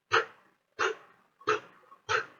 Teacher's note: the vocal cords do not vibrate during its production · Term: voiceless